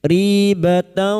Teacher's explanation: kita samarkan bunyi fathah tanwin dan mendengung selama 3 harokat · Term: ikfa hakiki